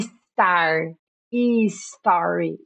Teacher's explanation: Então o S no começo não tem esse I ou esse E que a gente coloca, tá? Star, story, não tem esse I, gente, já começa com S.